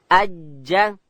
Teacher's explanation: جیم ادا کیږي د ژبې منځ به لوړ تالو ته ورولو.